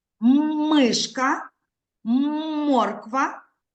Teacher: спочатку змикаються потім розмикається вимовіть так діти вимикаємо поки що мікрофончики губи заважають повітря вільно виходити з рота коли ми вимовляємо звук м